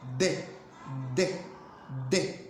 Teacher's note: un rasgo distintivo de este fonema va a ser que es oclusiva dental. Además, hay una explosión al pronunciar. De. Ahí está esa explosión.